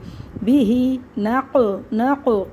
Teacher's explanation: فَأَثَرْنَا بِهِ اس کو جلدی اس کو کھینچ کے، بِهِ نَقْع قلقلہ کرنا ہے، قاف کو موٹا پڑھنا ہے